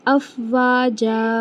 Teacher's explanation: جیم کے اوپر تنوین ہے، جب ہم وقف کرتے ہیں تنوین کو تو اسے ایک الف برابر لے کر آتے ہیں اور کھینچتے ہیں